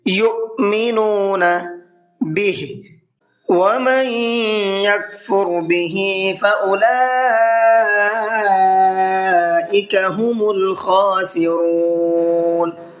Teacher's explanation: نون ساکن کے بعد میں یا ہے تو یہاں پر غنہ کر کے پڑھیں گے، اس لیے کہ نون ساکن کے بعد میں یا آتا ہے تو یہ ادغام یرملون کا قاعدہ کہلاتا ہے، اس میں غنہ ہوتا ہے۔ · حمزہ ساکن کے پڑھنے میں جھٹکا ہوتا ہے، اس لیے اس کو ہم نے جھٹکے کے ساتھ میں پڑھا ہے